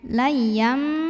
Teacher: Lay, layam, yam ada iqlab karena ada tanwin fathah bertemu huruf ba. Maka tanwinnya dirubah dulu jadi bunyi mim sukun, jadi m, layam, dan didengungkan.